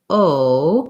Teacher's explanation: When I say O, my lips are very round and my jaw is closed, more closed.